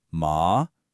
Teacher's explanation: The third tone is a dip. It goes down then back up.